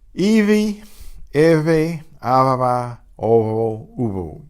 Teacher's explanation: So intervocalic B and intervocalic V will be the same.